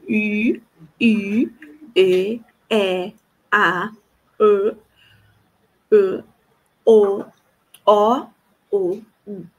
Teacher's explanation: Então eu vou da frente fechado para trás, abrindo e fechando.